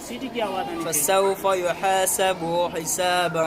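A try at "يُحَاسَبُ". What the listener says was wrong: دیکھو اس پیش کو آپ نے زیادہ کھینچ لیا. یحاسب حسابا.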